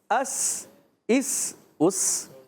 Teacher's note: سین سیٹی کے ساتھ ادا کریں گے · سین کا مخرج ہے زبان کی بالکل باریک نوک، اصلۃ اللسان اور ثناء سفلا ما اتصال ثناء علیا، یہ سامنے والے دانتوں کو کہتے ہیں۔